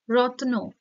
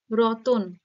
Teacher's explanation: যুক্ত ব্যঞ্জন ধ্বনির মাঝে বা মধ্যে একটা স্বরধ্বনি এর আগমন ঘটানো হয় তার ফলে যে শব্দটা তৈরি হয় সেটা কি হয় মধ্যস সরাগম